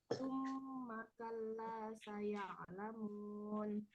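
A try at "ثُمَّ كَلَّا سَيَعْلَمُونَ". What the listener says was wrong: Betul, Masya Allah.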